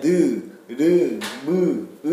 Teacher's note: 성대를 진동시켜 울리며 내는 소리. 그래서요, 자음을 발음할 때에는 음호음을 넣어줘서 니은이라고 발음하는 게 아니라 느, 르, 무, 으 하면 여기가 울립니다. · 울림 소리 성대를 진동시켜 울리며내는 소리